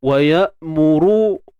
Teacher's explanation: huruf ra pada depan tebal dan dibaca dua harakat mat asli